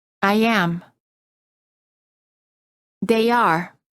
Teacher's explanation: And to ensure complete pronunciation of both of the vowels, we insert a short y sound y after a front vowel such as a, e, and i. and a short w sound, a short w sound after a back vowel such as oo and o. · Instead of saying I am, say I am. Insert a very quick Y sound.